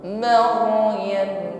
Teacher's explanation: Irti'ai di taraful lisan, ada getaran di ujung lidah. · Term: takrir